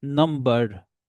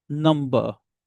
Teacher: American will always speak this letter R, but British won't speak this letter R if it comes after vowel